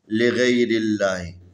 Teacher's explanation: لفظ اللہ کو جب قرات کریں گے تو نارمل پڑھیں گے، باریک پڑھیں گے